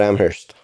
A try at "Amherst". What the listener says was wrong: Oh, no. It's okay. The H is silent.